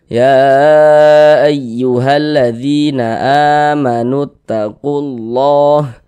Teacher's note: huruf yang memiliki tanda baca kasrah dibaca panjang sehingganya dzi dibaca panjang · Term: Mad thobbi'i, Mad tabi'i